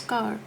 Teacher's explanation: Third position is open rounded lips, that when we for example it is car. So when we pronounce car, the lips are actually open rounded.